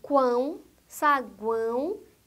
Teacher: Os tritongos também podem ser nasais, ou seja, pronunciados pela cavidade do nariz